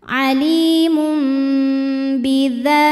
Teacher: Ada hukum iqlab karena ada tanwin dhammah menghadapi huruf ba, maka tanwin diganti jadi bunyi mim sukun disertai dengungan.